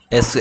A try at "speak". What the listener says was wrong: she speak입니까? she speak sh she 소리 나는데요 she speak가 아니고 speak인데